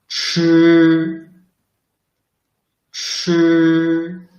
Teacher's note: it is an aspirated sound. So you must produce this sound with more breath.